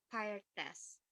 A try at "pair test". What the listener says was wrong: A-nya tuh jangan dibaca A ya. Dibacanya agak kayak E gitu.